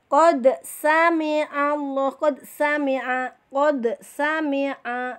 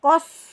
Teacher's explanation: Dalnya tidak dibaca, kita lebur ke sin. Itu namanya idgham mutaqaribain